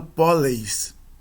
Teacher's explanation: Polei com acréscimo da terminação es. A semivogal cai e os dois sons de breve contraem-se em ei. Resultado poleis.